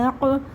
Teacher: قاف پہ قلقلہ کریں گے، قاف ساکن پہ